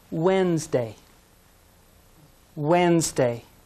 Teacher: the d is silent